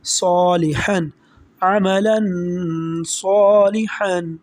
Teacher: آگے صاد حروف اخفا میں سے ہے، یہاں پر ہم غنّے کے ساتھ پڑھیں گے